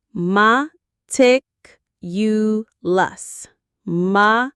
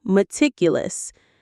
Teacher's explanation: The stress is on the second syllable, meticulous.